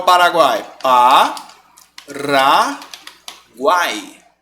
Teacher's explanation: esse encontro vocálico que tem 3 vogais e eles ficaram na mesma sílaba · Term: tritongo